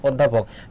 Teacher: তাহলে দেখো এই অ এর উচ্চারণটা, আদ্য অ এর উচ্চারণটা ও হচ্ছে